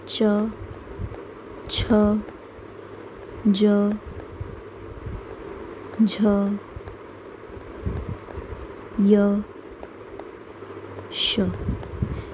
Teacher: तालु से जिन शब्दों का उच्चारण किया जाता है उनको बोलते हैं तालव्य। तालव्य व्यंजन या तालव्य वर्ण।